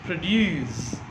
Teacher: If it is a verb, it is pronounced produce. So stress is on due. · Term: stress shift